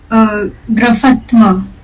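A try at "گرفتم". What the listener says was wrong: Graftam. Graftam. Because there is no A in between.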